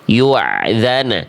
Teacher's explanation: salah karena bunyi hamzah sukunnya jadi ain